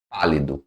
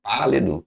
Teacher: proparoxitona sílaba tônica na antepenúltima sílaba